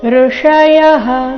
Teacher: ಇಲ್ಲಿ ಸ್ವರ ಋ ಇದೆ ರಸ್ವ ಅದರ ನಂತರ ಮೂರ್ಧನ್ಯ ಷ